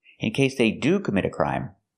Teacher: We're using do here in a positive statement to show emphasis, so we want to stress the word.